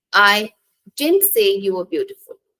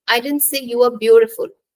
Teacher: I am going to stress didn't and in the second sentence I am going to stress beautiful